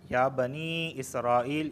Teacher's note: یہاں مرضی ہے کہ 2 الف کے برابر کھینچ کے پڑھا جائے یا 3 سے 4 الف کے برابر کھینچ کے پڑھا جائے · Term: مد منفصل